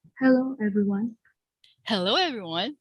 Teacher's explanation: yeah there's an invisible w